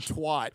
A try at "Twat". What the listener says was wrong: It's an A, not an O. It's twat.